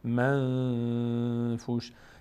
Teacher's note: صدا تو بینی داره میاد یه مقداری روش نگه می‌داریم منفوش صدای نون رو در بینی مخفی می‌کنیم بهش میگیم اخفا چون در عمل این صدا در بینی مخفی میشه در نوشتن